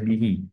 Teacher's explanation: H damirnya diapit oleh dua huruf yang hidup Oleh karena itu dibaca panjang dua harakat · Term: mad Silah qasirah